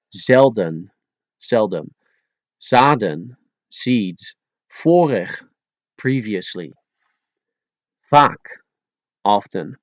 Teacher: If you pronounce the letter Z and the letter V exactly like they are, you could get away with it easily and sound good at Dutch. But in a lot of areas in the Netherlands and some in Belgium, for example, people turned a V into an F and a Z into an S.